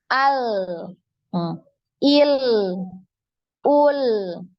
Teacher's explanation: huruf lam ini ketika disukun, maka dialirkan suaranya